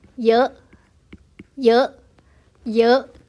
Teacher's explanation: chúng ta sẽ đọc thấp và ngắn hơi bởi vì ợ là nguyên âm ngắn